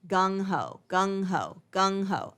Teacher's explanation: you don't really pronounce the g at the end it's there's a little bit of a liaison there right so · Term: connected linking